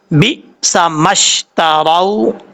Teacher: حمزہ ساکن ہے، یہاں پر جھٹکا دے کے پڑھیں گے، اور جھٹکا دیتے ہوئے قلقلہ نہیں کرنا